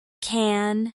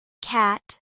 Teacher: the vowel in can is slightly different from cat because the N sound nasalizes it.